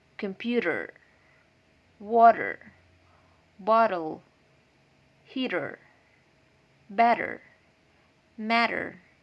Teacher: in phonetics this sound is called flap which means the tongue touches the roof of the mouth quickly